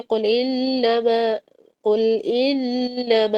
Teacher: قل انما کے نون شدہ میں کامل غنہ ہوگا